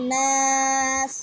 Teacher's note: নুনের উপর তাসদীদের কারণে ওয়াজিব গুন্না। না জবর বামে খালি আলিফ এক আলিফ পরিমাণ টান মধ্যে তবাই।